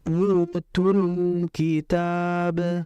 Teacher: mengalirkan lamnya itu dengan ujung lidah nempel ke atas ya, ke langit-langit atas, atau disebut dengan al-hanakul a'la. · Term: lam mati